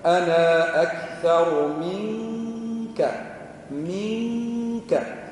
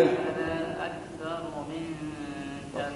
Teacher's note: مخرج الكاف من أقصى اللسان مع ما يقابله من الحنك الأعلى